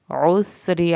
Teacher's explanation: عین کو حلق سے ادا کریں گے، را کی زیر کو کھینچنا نہیں ہے